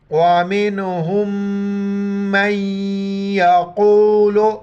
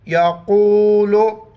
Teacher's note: बड़ी क़ाफ मोटा करके पढ़ेंगे